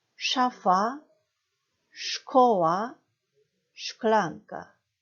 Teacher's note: 입술을 오므리셔서 SZ, 쉬 발음